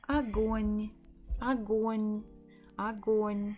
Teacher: The first letter, the first O, is not stressed, so we will pronounce it as a, g, o, н. Огонь, огонь, огонь.